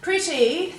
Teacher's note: we've changed it from an et to an it sound